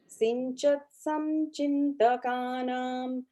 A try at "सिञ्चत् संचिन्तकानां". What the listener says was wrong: So the second line, sinchat sanchintakanam, in, not im. In. n, yeah, in.